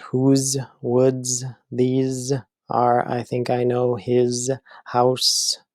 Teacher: so you have that repetition of that Z that long Z sound within a sentence not inside the word but at least within the sentence so